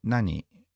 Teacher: can you also do it with a falling intonation like nani